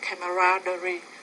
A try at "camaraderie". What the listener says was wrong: Camaraderie, good vocabulary word. Wow, and you pronounced it pretty accurately.